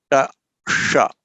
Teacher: This sh comes at the same point of articulation, the tongue touching the same spot. So ta, sh, with the tongue bent slightly back. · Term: retroflex sh